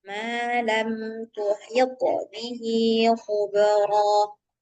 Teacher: jangan cuman ee angin aja yang keluar, tapi memang huruf thnya itu harus mantul